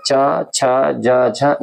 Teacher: ये जो च वर्ग होता है स्पर्श व्यंजन का इसका जो उच्चारण स्थान होता है वो तालव्य होता है